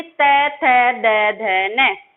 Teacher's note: तय वर्ग बोल के देखिए आप, त, थ, द, ध, न। जब आप तय वर्ग को उच्चारित करेंगे तो आपकी जीभ हर वर्ण को बोलने पर आपके दांतों से टकराएगी